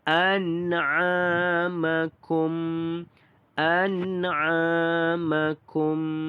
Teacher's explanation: A dibaca dengan panjang 2 harakat kerana mad asli huruf alif.